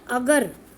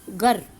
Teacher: अगर का अ स्वर लोप हो गया और बच गया गर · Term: आदि स्वर लोप